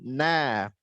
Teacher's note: Ujung lidah dengan langit-langit depan atas bawah dari makhraj lam. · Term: nun